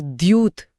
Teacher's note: दूत यानी संदेशवाहक एक कूटनीतिक पद है। लेकिन अगर उच्चारण में य का हल्का सा समावेश हो जाए तो वो द्यूत बन जाता है